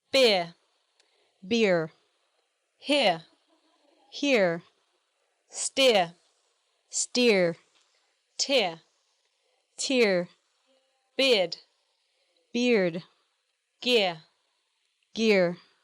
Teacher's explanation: Notice how the Americans pronounce the R sound much more prominently than the British.